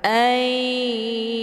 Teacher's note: nunnya dileburkan ke dalam huruf ya ataupun dimasukkan dengan cara ditekan kemudian ditahan lebih kurang 2 kali ketukan. Ayu. Hukum bacaan idgham bi gunnah dibacanya sambil didengungkan.